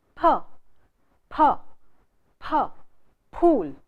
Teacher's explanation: It's a bilabial sound. That is, we use both the lips to produce the sound. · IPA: /p/